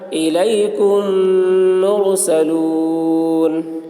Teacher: میم ساکن کے بعد میم آ رہا ہے اس لیے میم کو میم کے ساتھ ملا کر غنہ کے ساتھ پڑھیں گے، اس کو ادغام شفوی کہتے ہیں۔